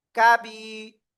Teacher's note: কাফ জবর কা, বা ইয়াজের বি, জেরের বামে জজমালা ইয়া, মদের হরফ এক আলিফ টান